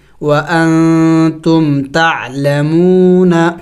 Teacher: میم واو پیش مو، نون زبر نا، تعلمون. مون واو مدہ ہے، اس کو ایک الف کے مقدار کھینچیں گے